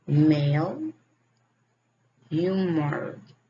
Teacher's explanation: Is voice bilabial nasal.